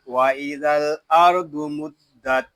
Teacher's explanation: ضاد پیش دو وَإِذَا الْأَرْضُ میم دال پیش مد. یہاں دال مشدد ہے، اس کو جماؤ کے ساتھ ادا کریں گے کیونکہ دال حروف قلقلہ میں سے ہے